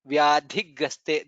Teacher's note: Vyadhigraste, dha is mahaprana.